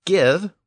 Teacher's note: the modern word give with its original hard G sound indicates that it came with the Vikings